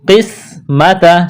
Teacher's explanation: قسمت، سین میں سیٹی کی آواز پیدا کریں گے، سین کو باریک کرنا ہے۔